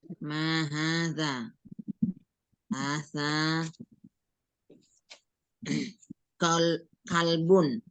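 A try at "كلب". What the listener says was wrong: nah, kalbun bukan kolbun Ibu ya. Kolbun sama kalbun.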